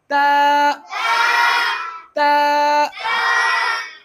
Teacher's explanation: जबान की नोक बाहर निकालना और अंदर के दांतों के ऊपर के दांतों के अंदर हिस्से पे लगाना है।